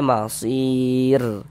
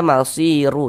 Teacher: kalau kita berwakaf di huruf ro kita baca masir. Jangan dibaca masiru.